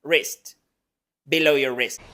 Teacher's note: una I corta que es una I que no existe en español, es más corta y más relajada, la S del español y la T, wrist, below your wrist.